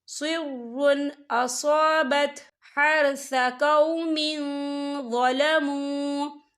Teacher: ہم یا اظہار کریں گے اور ہم اسے بنا غننے کے پڑھیں گے